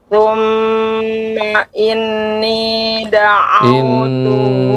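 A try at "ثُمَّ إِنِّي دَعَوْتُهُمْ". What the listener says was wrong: Ini lebih dipanjangkan lagi Ibu. Thumma inni da'autuhum.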